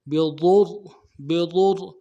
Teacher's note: ضاد کو موٹا کریں گے اور ضاد کے پیش کو را کے ساتھ ملائیں گے. بضر، بضر، اور را کو بھی آگے لام کے ساتھ ملائیں گے، تشدید ہے.